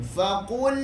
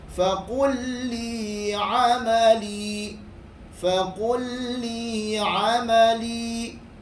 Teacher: Faqulli, biasa itu bacaan yang salah. Bacaan yang betul hanyalah dicepatkan, cuma tekan sahaja kerana ada sabdu.